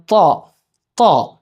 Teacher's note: നമ്മുടെ നാവിന്റെ അറ്റം മേലത്തെ മുൻപല്ല തട്ടിയിട്ടാവണം വരേണ്ടത്